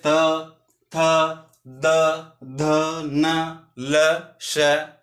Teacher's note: तो हमारी जिह्वा है ना, वो हमारे दंत को स्पर्श करती है या हमारे दंत की ओर आगे की ओर बढ़ती है। जैसे हम तय का उच्चारण करेंगे तो देखो, जिह्वा हमारे दंत को स्पर्श करेगी।